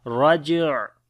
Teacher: on the jim we make qalqala